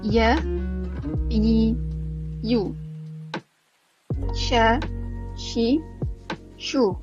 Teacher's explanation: Untuk ketiga-tiga huruf ni, bahagian tengah lidah dia dekat dengan lelangit belah belakang